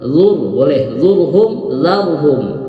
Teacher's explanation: Itu tebal dua-duanya, ra-nya dibaca tebal, tafkhim. Kemudian hum, ya hum berhenti.